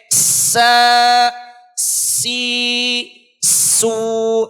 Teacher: सीन के अदा करते वक्त इसकी आवाज सीटी, तेज मिस्ल सीटी की तरह, जिस तरह से कुकर की सीटी होती है, आप इसी को समझ लीजिए कि तेज मिस्ल सीटी के स, सी, सू, इस तरह से अदा करना चाहिए।